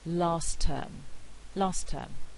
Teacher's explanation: plosive elision and this is in order to avoid complex clusters alveolar consonants T and D tend to disappear in consonant clusters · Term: alveolar plosive elision